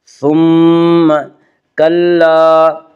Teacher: میم مشدد غنہ ہوگا، غنہ کی مقدار 1 الف ہے